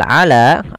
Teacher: la kita panjangkan sepanjang 2 harakat karena dia mad tabi'i, ada fathah bertemu alif